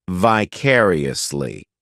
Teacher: this adverb has five syllables and the stress is on that second syllable vicariously the third syllable it's like that letter I just has